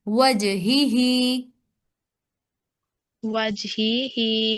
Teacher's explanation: اب دیکھیں جو آپ نے پڑھا وجہی ہی، اگر آپ اس کو پڑھیں گے، اس لیٹر کو، جو آپ کے سامنے یہ لاسٹ والا لیٹر ہے، یہ والا، ٹھیک ہے، اگر آپ جی اس جی کو پڑھیں گے نا وجہی ہی، تو ہی کے نیچے تو زیر جی ہے، لیکن اگلی ہی کے نیچے کھڑی زیر ہے، تو اس کو ایک الف کے برابر لمبا کریں گے. ان دونوں ہا کی حرکات میں ڈفرنس کرنا ہے آپ نے، ایک کے نیچے زیر ہے، دوسرے کے نیچے کھڑی زیر ہے، تو ایک کو ایک حرکت جی.